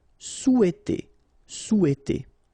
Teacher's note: in French we don't pronounce this H, okay? It doesn't phonetically exist here, so you've got sou, after that you've got e, and then t.